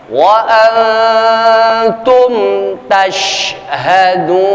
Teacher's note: nun mati bertemu dengan huruf ta, proses ikhfa-nya 2 sampai 3 ketukan paling tidak.